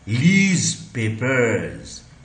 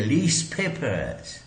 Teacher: लीज पेपर्स में ये प के कारण ये ज जो है ये स बन गया।